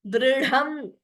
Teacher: Note only dha is mahaprana. Dri is alpaprana.